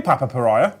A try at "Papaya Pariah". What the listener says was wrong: It's actually Papaya Pariah, but I always say Papa Pariah as well. Papaya. It's not Papa, it's Papaya.